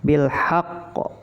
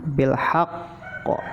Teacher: Pantulannya lebih kuat dari yang lain, yaitu qalqalah akbar.